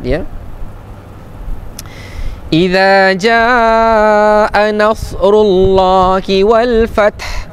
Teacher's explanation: dia jadi mad wajib muttasil tak dibaca dua harakat tapi dibaca empat harakat · Nasrullahi, Allah dibaca dengan tafkhim. Nama Allah dibaca dengan tebal.